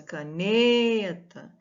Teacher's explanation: então a sílaba tônica é a penúltima sílaba